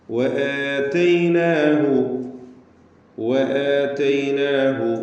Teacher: വആതൈനാഹു, വആതൈനാഹു, വാവ് രണ്ട് ചുണ്ടുകളിൽ നിന്ന് തന്നെ വരണം, സൂക്ഷിക്കുക. എന്ന് ചുണ്ടുകൾ കൂട്ടി അല്ലെങ്കിൽ കൂർപ്പിച്ച് വെച്ച് വൃത്താകൃതിയിലാകുന്ന അവസ്ഥയിലാണ് വാവ് ഉച്ചരിക്കുമ്പോൾ ഉണ്ടാവുക. വആതൈനാഹു ആതൈനാഹു.